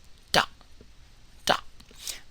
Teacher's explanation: this is an unaspirated T by the way so it's not the T sound in tone tumble and tile